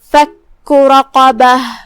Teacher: کلمت فک میں یہاں کاف پہ تشدید ہے، لہذا 2 حرف کی مقدار میں کاف کو ادا کریں گے، کیونکہ تشدید کی اصلیت 2 حرفیں ہوتی ہے. · قاف جو کہ حروف تفخیم میں سے ہی ہے، تو ہم را کو اور قاف کو دونوں کو بھاری آواز میں ادا کریں گے. آخری میں تائے مدورہ کا دھیان رہے ہم اس پہ رکیں گے تو ہا سے رکیں گے.